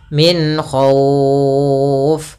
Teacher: ada bacaan izhar nah izhar di sini adalah izhar halqi yaitu suara nunnya kita baca dengan jelas tanpa ditahan karena datang setelah huruf nun ada huruf k yang di mana